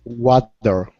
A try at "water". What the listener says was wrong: Okay, you're getting closer, but your tongue is still touching your teeth. You're saying water. for example, let me show you what's going on here. Okay, in Spanish, when you pronounce a D, okay, your tongue touches right there in the back of your teeth. You're saying water. Okay, you're pronouncing a Spanish D. Your tongue does not touch your teeth in English when you pronounce a D sound.